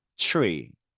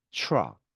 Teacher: TR은 T 발음이 츠 발음이 됩니다. 그래서 트리보다는 tree, 트럭보다는 truck 이런 느낌으로 네, 발음이 된다라는 거 확인하시고요.